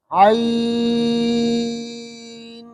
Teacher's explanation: عین کے یا کے اندر ناک میں آواز نہ لے جائے، اور عین میں جو نون ہے اس میں تھوڑا سا غنہ کرے